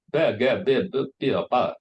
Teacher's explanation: in London, they speak a very famous Cockney, and they have glottal stop. They swallow the T sound. The better get a better bit of butter becomes better get a bit of butter.